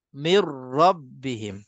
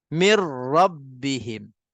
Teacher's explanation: nun bertemu dengan ra, mir nun tu tak ada langsung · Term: idgham bila gunnah kamil